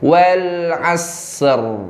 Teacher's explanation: berhubung ro-nya kita matikan, barulah kita keluarkan huruf ro dengan bacaan yang tebal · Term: Ro tebal